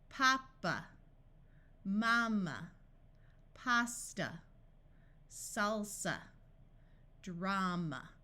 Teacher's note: notice in all of these the first sound is the clear a sound and the one at the end is the uh sound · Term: broad A sound